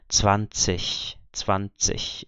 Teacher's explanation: a pronúncia do encontro IG em final de palavra é como se fosse um CH da palavra ich